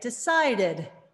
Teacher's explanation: We add the syllable because we can't say the /d/ two times. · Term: extra syllable